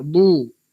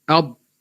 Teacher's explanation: Muncunglah du. Bila dad mati, dia tak muncung.